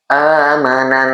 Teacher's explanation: dengung fifty-fifty masuk ke hidung dan masuk ke rongga mulut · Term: gunah, gunnah